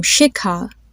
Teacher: Now, when you have that situation, it's pronounced a little bit differently. You have to aspirate, which means you release a breath of air when you say it. And there's a more of a H sound that comes.